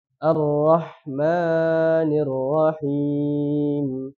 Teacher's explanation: terlalu memanjangkan di huruf Ma